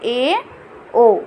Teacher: अर्ध समृद्ध स्वर जिसमें हमारा आधा मुंह खुला हो